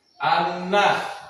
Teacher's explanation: karena nun fathah bertemu dengan alif, cara bacanya dipanjangkan 2 harakat · Kedua, guna, karena nun bertasdid, cara bacanya dengung dan ditahan. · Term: mat tabi'i